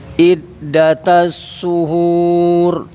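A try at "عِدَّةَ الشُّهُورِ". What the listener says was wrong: Ainnya emang belum dikoreksi ya. Jadi kita baru fokus ke huruf shinnya.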